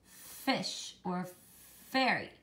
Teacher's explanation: your top teeth are gonna sort of lightly bite your bottom lip it's a lip biter and you're gonna make the sound try it with me but